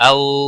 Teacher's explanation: او واو لین ہے، تھوڑا نرمی کے ساتھ کھینچ کر ادا کریں گے